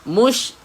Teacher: Ada sebutan tafashi, ada semburan. Mush di kawasan tengah lidah kita.